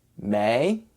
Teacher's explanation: the e I sounds like the hard a sound so altogether it sounds like the fifth month of the year with a rising tone